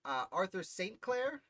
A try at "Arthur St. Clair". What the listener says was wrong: It's pronounced Arthur Sinclair. I often say St. Clair, but he did pronounce it at the time as Sinclair.